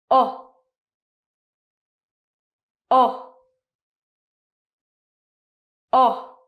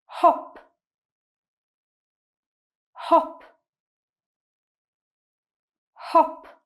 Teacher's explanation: your mouth is round, your tongue is very low in your mouth, and it's a very short sound. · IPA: /ɒ/